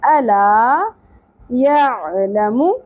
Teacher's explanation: یہاں پر حرف مدہ ہے اس لیے لا الف زبر لا ایک الف کے برابر کھینچیں گے